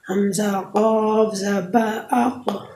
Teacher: زبان کی جڑ جو کوے کے پاس ہے جب اوپر کے تالو سے لگے تو اس سے قاف ادا ہوگی۔